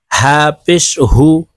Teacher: এই হা হলকের শুরু থেকে উচ্চারণ হবে